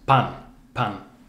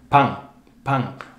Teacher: we very often hear pan, pan, almost like a G sound. It's that nasal vowel thing